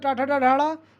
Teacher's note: टा वर्ग मूर्धा से बोला जाता है